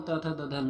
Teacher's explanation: त वर्ग में त थ द ध न आता है जिन्हें दंत ध्वनियाँ भी कहते हैं